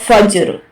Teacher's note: فا جیم زبر فج را دو زیر فجر فجر. جھٹکا دیں گے ہلکا سا کیونکہ جیم جو ہے حروف قلقلہ ہے